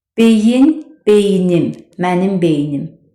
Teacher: Və bu sözlərə mənsubiyyət şəkilçisi artırdıqda ikinci hecadakı sait düşür. Məsələn, beyin, beynim, mənim beynim. · İkinci hecadakı sait düşdü.